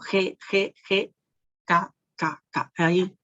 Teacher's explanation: Hay un contacto del perdorso de nuestra lengua con el velo del paladar. De allí el nombre de linguoveolar. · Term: linguovelar